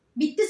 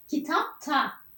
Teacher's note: iki tane sert ses yan yana ne yapmış olduk sertleşme Benzeşme ünsüz uyumu